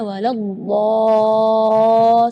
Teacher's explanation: Di kalimat ini juga waladhdallin yang perlu diperhatikan adalah madnya juga. Mad di situ kita harus panjang membacanya 6 harakat karena di situ hukumnya mad lazim kalimi mutsaqqal, jadi membacanya waladhdallin 6 harakat.